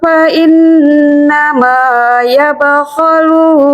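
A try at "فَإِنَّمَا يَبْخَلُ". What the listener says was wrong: Pendek aja, yabkhalu.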